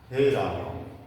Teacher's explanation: रा को बोलने में हमें पहले जो बोल रहे हैं उससे 3 गुना समय लगना चाहिए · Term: प्लुत स्वर